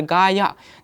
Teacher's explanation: 2 अक्षर है यहाँ पर, गा प्लस या, लेकिन यहाँ पर गा के जो आ है, गा के आ है यहाँ पर, या फिर अक्षर शब्द पर जब उच्चारण करते हैं यहाँ पर गाया, तब यहाँ पर गा शब्द पर ज़्यादा जोर दिया जाता है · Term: अक्षर बलाघात